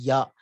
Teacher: Ya is semi vowel, we say, because it is neither a ah, it is not a ah, it is a ya, because there is partial obstruction of air. Ya, when you say, you're obstructing using your tongue, but you're allowing a little air. So it is neither, it is between a pure vowel and a pure consonant.